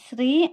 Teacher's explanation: శ్రీ అన్నప్పుడు నాలుక తాలును అంటే పై భాగాన్ని తాకాలన్నమాట